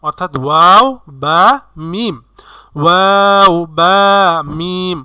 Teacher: 15 নম্বর মাখরাজটি দুটি ঠোঁট, আমাদের দুই ঠোঁট থেকে উচ্চারিত হবে 3টি হরফ। সেই 3টি হরফ হলো মিম বা ওয়াও, অর্থাৎ ওয়াও বা মিম, ওয়াও বা মিম।